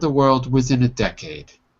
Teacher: I kind of dropped down on decade.